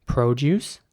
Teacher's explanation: so the o is very round again produce and produce here's an example of the american english